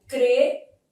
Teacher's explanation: a letra M tem som de I, sendo som semivocálico. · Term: ditongo fonético